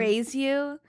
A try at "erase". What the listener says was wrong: Why do you say erase like that? You don't pronounce the S. You say it like erase.